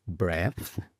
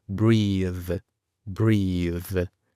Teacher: Y el verbo, en este caso el infinitivo, breathe, breathe, con una TH sonora al final, es decir, vibra, breathe. El primero es breath y hacemos como una Z donde no hay vibración. Después tenemos breathe, breathe, donde la lengua vibra. Es la misma posición de la lengua como una Z, pero vibrando.